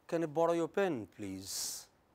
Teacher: when you ask a question, when you make a request, you know, then you start at a low rate of vibration and move to the high rate of vibration · The vocal cords start at a low rate and go at the high rate. So, you can have low to high, rising vibration. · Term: rising tone